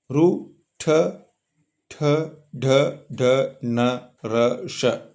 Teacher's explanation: ನಮ್ಮ ನ್ಯಾಲಿಗೆಯ ಮೇಲ್ಭಾಗದ ಮೂರ್ಧ ಭಾಗದಲ್ಲಿ ಹುಟ್ಟುವುದರಿಂದ ಇವುಗಳನ್ನ ಮೂರ್ಧನ್ಯ ಗಳೆಂದು ಕರೆಯುತ್ತೇವೆ